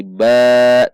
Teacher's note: Namun karena di akhir kalimat maka ban menjadi ba, dua ketuk, yaitu mad iwad